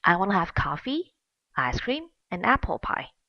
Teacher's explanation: because the speaker is making lists of items in the sentence both rising and falling intonation has to be made